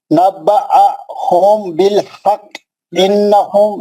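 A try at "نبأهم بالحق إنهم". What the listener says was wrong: गुन्ना करना है, गुन्ना।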